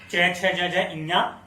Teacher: तो इसमें जो हमारा च वर्ग, च, छ, ज, ज, इन्या, ये जो होगा हमारा तालु से होगा, या तालव्य इसको कहते हैं।